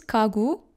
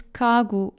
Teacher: When gyok is placed between vowels, like you see over here, it should be pronounced as g. In all other cases, when gyok is the first letter in a word, the last letter, or placed before a consonant, read it as k.